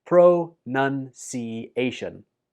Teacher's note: The second syllable in this word is none, not noun. So it goes like this: pronunciation.